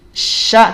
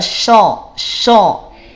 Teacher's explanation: Istifal itu shin tidak perlu dinaikin pangkal lidahnya. · Ya, PLTN atau PLT. PLTN pangkal lidah tidak naik, PLT pangkal lidah terhampar. Sehingga bunyinya tipis, tidak tebal.